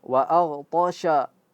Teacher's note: Jangan sampai a-nya itu menjadi tebal gara-gara ghainnya yang tebal dan sukun.